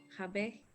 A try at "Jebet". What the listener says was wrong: Solo ahí en el Jebet. No es Yebet, es Jebet. Jebet, Abu. Jebet.